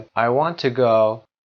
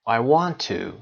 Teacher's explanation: I want to go به صدای ت کوچیک هست. ت با صدای شوا هست. کشیده نیست. ولی وقتی که میخواد استرس بگیره صدای او میده.